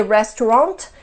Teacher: that's a nasal sound it's the a and the N we don't pronounce them separately